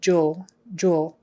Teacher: When there's an L, jewel. Your lips are going to kind of round as if there were a W in there.